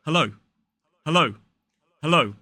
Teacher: they use a schwa in that first syllable